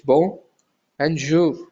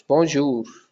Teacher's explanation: you're not pronouncing the N